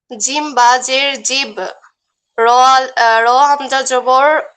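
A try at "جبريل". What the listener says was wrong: র হামজা না, র আলিফ, আলিফ জবর।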